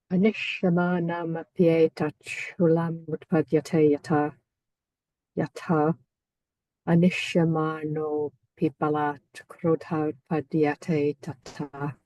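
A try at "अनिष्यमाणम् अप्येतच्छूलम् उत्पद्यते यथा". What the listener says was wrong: Okay, yes, but can you do it again, but with more emphasis on the light syllables and the heavy syllables and the longs and the shorts? there was some kind of slight blurring. Sorry, there was some slight blurring I detected in what you were saying.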